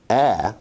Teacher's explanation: A is a low front unrounded vowel